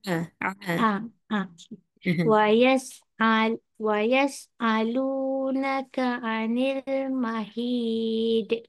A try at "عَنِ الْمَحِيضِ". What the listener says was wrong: Tak boleh qalqalahkan. qalqalah anil mahid. a. A jadi hamzah. Baru betul ain.